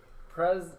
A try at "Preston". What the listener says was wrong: Preston, basically. Without T, it's like Preston.